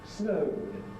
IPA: snəʊd